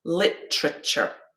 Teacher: we've got three syllables yeah the main stress is on the first